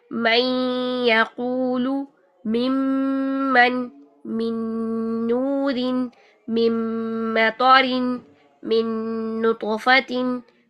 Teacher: ادغام یعنی نون کو اگلے حرف میں مرج کرتے ہوئے آواز جو ہے نون کی اور اگلے حرف کی 50-50% آئے گی جب نون اور نون کا ادغام غنہ کے ساتھ ہوگا. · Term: ادغام مع الغنہ